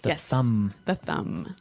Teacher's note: I actually only pronounce the M